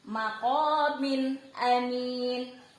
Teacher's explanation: Contohnya jika bertemu dengan alif, maqamin amin. Jadi n-nya ini maqamin. Ada baris 2 bertemu dengan salah satu huruf hijaiyah, alif. Nah, n-nya dibaca jelas. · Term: izhar